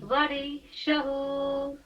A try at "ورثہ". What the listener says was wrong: شہو نہیں، سیٹی کیٹ والا سا. ورثہ. ورثہ. شہو نہیں، سدہ.